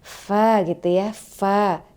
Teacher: kalau fa ini keluar hurufnya dia agak menggigit bibir